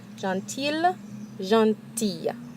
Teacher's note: Here we have that double L, and so it's actually going to make a Y sound.